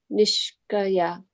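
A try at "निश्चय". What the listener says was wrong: So here C is never pronounced as a K, it's always a cha, right? Nishchaya.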